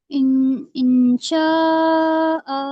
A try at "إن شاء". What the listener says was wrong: پہلے میری بات غور سے سنو میم پہ مد ہے نا میم الف پہ مد ہے نا تو اس کو کھینچ کے بھی تو پڑھو مد کو 3 انگلی برابر کھینچتے ہیں نا